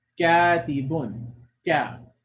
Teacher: You'll feel it in the back of your mouth that is touching there, and then we release it, and then we say the fatha, katibun. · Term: Kaf